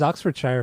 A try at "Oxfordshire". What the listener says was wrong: Oxfordshire. We don't say Shire.